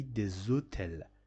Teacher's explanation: Instead of telling de hotel, we can say des hôtels. The sound of this letter S will be changed into Z, and after that it mixes with hotel and it makes you this pronunciation des hôtels.